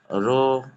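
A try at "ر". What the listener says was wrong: রা নাই, সব থেকে রয়ের উচ্চারণ হবে র। সব জায়গায়। এখানে রা বলে না, সব জায়গায় র।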